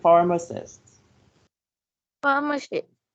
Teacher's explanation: the stress should be put on the first syllable